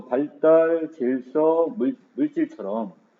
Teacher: 리을 받침 뒤에 경음화가 일어납니다